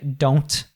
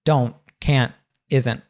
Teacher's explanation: Usually when we have this NT at the end of words, we'll pronounce that T as what's called a glottal T, it's a sound that's cut off at the back of, we cut the T off at the back of our throat, right? So it's like uh, uh, uh, uh. · We don't say that strong T in American English